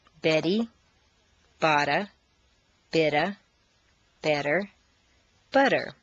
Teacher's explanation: all of the t's are in Weak positions so they all sound like soft D's